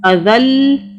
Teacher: اس دال کو ہم نے اس لام سے ملایا اور لام کی 2 مرتبہ آواز بنائی